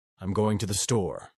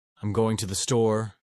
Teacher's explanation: Three, the uptalk at the end of sentences. Californians often raise their tone at the end of sentences, making everything sound like a question.